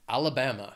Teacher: It has four syllables and the stress is on that third syllable, that bam. Alabama. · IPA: /ˌæl əˈbæm ə/